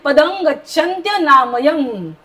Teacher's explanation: पदमच्या वरती पुढे ग आहे त्याच्यामुळे आपला तो शंख सारखा उच्चार करणार अनुस्वाराचा. पदं गच्छ गच्छन्त्य, पूर्ण बोललं पाहिजे.